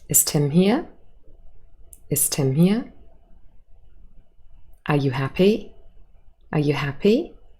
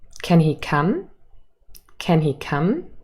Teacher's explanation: closed questions these yes no questions they have a rising intonation